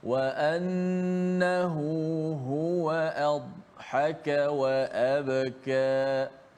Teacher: Tak boleh adhaka dibunyikannya dikuatkan huruf dad tetapi tidak dilantunkan seperti qalqalah